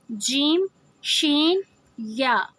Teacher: جیم، شین، یا زبان کا درمیانی حصہ اور اس کے مقابل تالو کے ملاپ سے ادا ہوتے ہیں، یعنی جو ہماری زبان ہے وہ اوپر تالو سے لگتی ہے، درمیان کا حصہ، اس سے ہم جیم، شین، یا۔